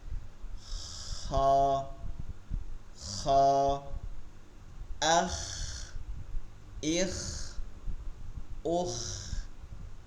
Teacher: খয়ের উচ্চারণটা হলকের শেষ থেকে এখানটা তালুতে ঘষা খাবে